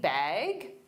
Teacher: with a rising intonation to show it's a question